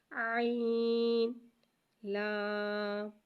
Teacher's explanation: عین کو ایک الف یعنی 3 مقدار کھینچ کے پڑھیں گے۔ لام کو ایک الف یعنی 3 مقدار کھینچ کے پڑھیں گے، اور یہ خیال رکھیے گا کہ دونوں کو ہر الفاظ کو الگ الگ پڑھنا ہے، اور مخرج کا بھی خیال رکھیے گا۔